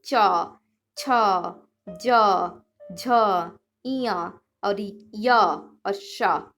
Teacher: ये सारा हमारा तालु से ही निकलता है